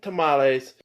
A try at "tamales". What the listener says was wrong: So you've said tamales. We always have said tamales. And now like that E's not being pronounced. What's up with that? When, because what I grew up with and what I still hear, I hear the E being pronounced. Tamales.